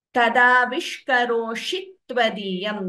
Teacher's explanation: If you listen carefully, t is doubling before tvadiyam.